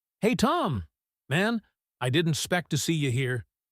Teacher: The rhythm is bouncy and light. The stresses fall on hey Tom man. · The stresses fall on hey, Tom, man, spect, see, and goin'. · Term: casual greeting rhythm